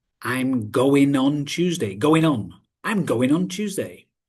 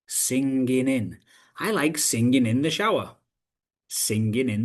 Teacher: the G is dropped and then it links to the following vowel sound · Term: gdropping